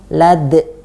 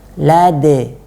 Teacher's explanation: Jadi harus kita hilangkan hamzah sukunnya. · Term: qalqalah